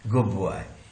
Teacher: गुड बॉय का ड नहीं रहा, ब बन गया, क्यों? ये ब का ब इधर आ गया, गुड बॉय। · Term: रिग्रेसिव